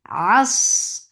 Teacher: Ain from your throat. ففتحة open jaws attached sad.